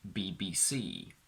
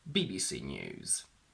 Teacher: You will have noticed that I shifted the stress. When I said BBC, the stress was on C. When I said BBC News, the stress was on the first B.